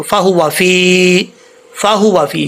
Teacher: کیسے پڑھیں گے، فا یازر فی، لمبا کرنا ہے اس کو، فہو فی، فہو فی. یہ ہا موٹا ہے، اس ہا کا تعلق سینے سے ہے، حلق سے نہیں ہے